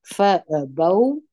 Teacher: دلته واو لین دی دا به په نرمي سره وایست فابوا ان یضیفوهما دلته بیا ادغام د نون ساکن دی د